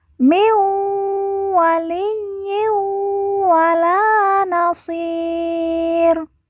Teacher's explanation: Nun mati bertemu dengan huruf wawu, maka nun mati dileburkan langsung masuk huruf wawu, kemudian ditekan, ditahan 2 harokat dan didengungkan.